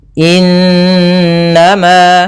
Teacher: Cara membacanya, suara n-nya ditahan 2 harakat. Innama, baru dilepas. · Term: gunnah